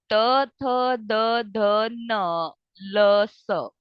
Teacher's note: आपकी पूरी टंग जो है वो फ्रंट जो टीथ है आपके उसके बैक साइड में जो है वो टच हो रही है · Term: दंत